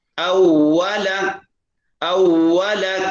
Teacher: واو ہونٹ گول کر کے ادا ہوتا ہے